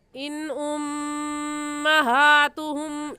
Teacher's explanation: इस मीम साकिन पर हम गुन्ना नहीं करेंगे क्योंकि कायदा ये है कि मीम साकिन के बाद बा या मीम आ जाए उस सूरत में मीम साकिन पर गुन्ना करते हैं।